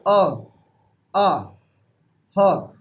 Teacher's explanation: हमारी जीभ का जो अंतिम छोर है, यानी कि जड़ है, वो किसको टच होती है? गले को। इसीलिए इनका नाम कहलाता है कंठ्य।